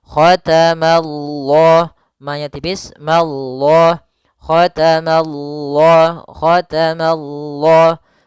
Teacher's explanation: Ma-nya tipis, Allah-nya tebal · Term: lafzul jalalah